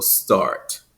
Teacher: is a rotic accent it has that rounded full R sound